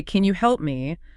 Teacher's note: with a flat falling tone, it sounds like a command, >> right? You need that rising intonation at the end, that upward inflection.